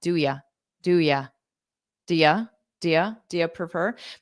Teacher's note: I would probably have the ooh sound in do, but then take the y and have more of a ya